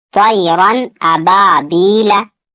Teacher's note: यहाँ अलिफ से पहले जबर है, अलिफ मद्दा थोड़ा खींच कर पढ़ना है। या साकिन से पहले यहाँ जेर है, या मद्दा होगा, इसे भी थोड़ा खींच कर पढ़ना है